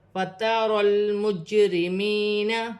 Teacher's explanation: جیم ساکن ہے، قلقلے والا حرف ہے، قلقلے کے ساتھ ادا کیا جائے گا